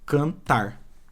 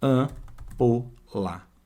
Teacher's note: esse M, ele não tem som sozinho. Ele está apenas nasalizando a vogal que vem antes. Ou seja, aquele A é como se ele tivesse um tiozinho ali.